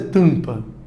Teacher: você analisou porque o m está no final da sílaba e m no final de sílaba vai fazer com que essas duas letras tem um som de vogal nasal